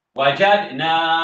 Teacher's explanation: Dal ni muncul qalqalahnya. Sebab apa? Sebab dal yang mati dia jumpa dengan nun.